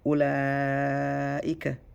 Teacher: So the madda alif and the hamza are in the same word. So you stretch 4 to 5. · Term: muttasil